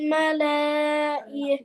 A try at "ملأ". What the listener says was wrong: मलाई नहीं मलाई, खींचती क्यों है इसको?